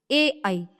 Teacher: कंठ तालव्य कंठ और तालु से